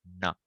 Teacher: if your tongue goes up and you add a nose you will get nah